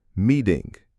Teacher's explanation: Even with an ing at the end, the T is between two vowels. So it becomes a flap.